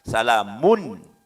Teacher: tanwin ketemu huruf H ya maka munculnya dibaca jelas tidak boleh dibaca samar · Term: izhar